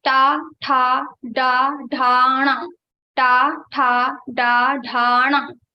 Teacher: for pronouncing these ta varga letters, you have to touch your murdha with your tongue. So when you pronounce ta varga letters, your tongue goes to your murdha.